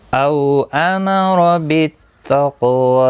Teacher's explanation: او واولین ہے، تھوڑا نرمی کے ساتھ کھینچ کر ادا کریں گے، اور زبر کی وجہ سے پر پڑھا جائے گا، باقی کسی بھی حرکت والے حرف کو کھینچنا نہیں۔